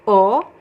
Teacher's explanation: So I pronounce the first O as a closed O.